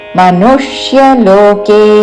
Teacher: మనుష్యలోకే ను మీద ఆఘాత